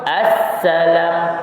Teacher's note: Jadi bunyi sin tu kan, dia ada bunyi desir yang kuat. Tu. Kemudian baru kita sebut harakahnya.